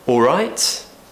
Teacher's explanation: we would use a rising tone because it's a yes/no question